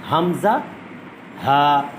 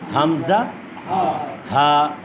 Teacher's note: 1 নম্বর মাখরাজ হলো হলকের শুরু, কণ্ঠনালীর সিনার অংশ শুরু থেকে হবে।